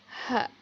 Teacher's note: Al-aqsa al-halq, pangkal tenggorokan. Huruf hijaiyah yang dibaca adalah ha.